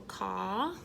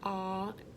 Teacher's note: the tongue is flat, lazy, loose, jaw is open vertically, aw, lips are not smiling, so that's not the correct placement.